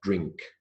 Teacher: The sound is a ng, as in going, coming, bring, and sing. So the ng sound comes before the k sound, drink.